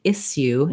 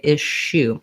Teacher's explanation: uh we don't say isu in american english we say ishu · the s sound my tongue is more forward with the tip down the sh you have to pull the tongue back a little bit and you may also round your lips a little bit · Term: sh sound